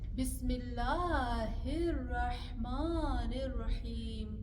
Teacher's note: ایک ہاں کا مخرج نکلے گا گلے کے اوپر سے جو دو ہاں ہے اس کے مخرج نکلیں گے گلے کے بیچ میں سے